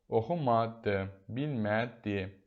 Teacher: ma vurğu qəbul etmir, düşür əvvələ. Bildiyimiz kimi, mamə inkar keçisində vurğunu qəbul etməyən saitdir.